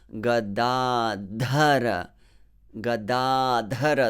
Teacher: make that aspiration. Push a bit more air from your lungs on the dha.